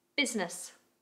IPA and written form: bɪznɪs (Business)